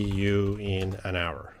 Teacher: in English, in this word, the H is silent. We don't say the H.